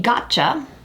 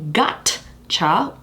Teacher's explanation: you can think of it kind of like an unaspirated ch